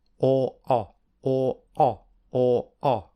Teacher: the mouth is slightly more closed for or and the lips are also more rounded